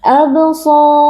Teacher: Huruf shad merupakan huruf tebal, kita angkat pangkal lidah. Kemudian di sini juga terdapat mad tabi'i karena ada alif yang sebelumnya berharakat fathah, kita baca panjang dua harakat.